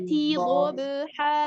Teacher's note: T-nya tipis. T-nya tipis, baru dot-nya yang tebal.